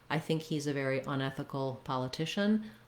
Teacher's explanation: I don't have a lot of stress on the un. The stress is mainly on the ethical part. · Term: stress pattern